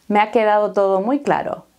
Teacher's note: Puedes escuchar que hay un poco más de fuerza en quedado, todo y claro.